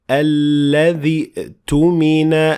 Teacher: Notice how I ignored Hamzat al-Wasl when I kept on reading